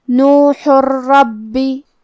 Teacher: کلمت ربی، را حروف الادغام بغیر غنہ میں سے ہے، تو ہم یہ تنوین کو را میں ملا کے بغیر غنہ سے لیکن تشدید کے ساتھ یہ حکم کو ادا کریں گے · کلمت نوح کے آخری میں حرف الحا ہے، ہا کو ہم حلق کے درمیان والے حصے سے پڑھیں گے